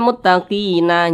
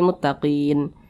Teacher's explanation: Huruf nun tidak dibaca panjang, makanya kita sukunkan. Makanya dibaca muttaqin, haqqan 'alal muttaqin, seperti itu.